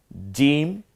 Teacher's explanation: জিম, জিব্বার মাঝখান ওই বরাবর তালু।